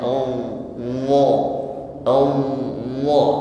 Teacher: Ya, coba dirasakan wa disertai pangkal lidah yang naik, ya. Ketika mengucapkannya memang terasa berat, dan ini yang menyebabkan bunyi huruf wa menjadi tebal. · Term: tafkhim